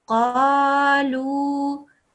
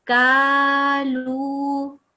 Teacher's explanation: You're saying the qaf sound for the kaf sound. Qaf, your mouth goes round. Kaf, your mouth goes open.